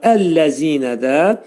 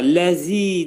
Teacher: Yəni zi 2 səs qədər uzadılacaq və zəl demək bu hərf pəltək hərfdir. Dil 2 dişin arasına girərək xəfif şəkildə pəltək zə səsini çıxarırıq.